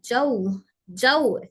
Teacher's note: में होठ पूरे गोल हो जौ जौ पहले जिम बारीक है जीम लाइट लेटर है तो जिम को बारीक पढ़ते हुए फिर वा के लिए होट गोल करेंगे ज ज उ मेरे होठ गोल हो रहे यहां पर जाऊ